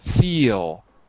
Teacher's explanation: If I say feel, right, there's no L. I'm just saying feel. My tongue is floating in my mouth.